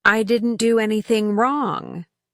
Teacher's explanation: Notice how their voice might rise on wrong to express emotion. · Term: Intonation